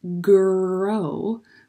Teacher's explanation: G also happens far back in our throat with our tongue, like in the way back of our mouth, I mean.